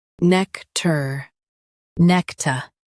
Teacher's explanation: nec ta nec-ta nec ta nec-ta Stress nec and keep tar light.